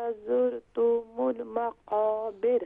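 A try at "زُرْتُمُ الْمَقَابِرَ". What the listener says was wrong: ज़ुरतुमुल नहीं है, यहाँ पर ता को भी शॉर्ट साउंड करेंगे, मीम को भी शॉर्ट साउंड करेंगे, तो ज़ुरतुमुल ज़ुरतुमुल मक़ाबिर। हाँ, जब आप रॉ से पहले कसरा हो तो फिर रॉ जो है वो लाइट होगी।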